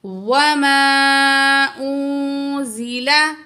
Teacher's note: नून साकिन के बाद जा है, हरूफ इख्फा में से नून की आवाज़ को हम क्या करेंगे, नाक में छुपा के पढ़ेंगे